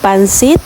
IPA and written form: panˈsɪt (Pancit)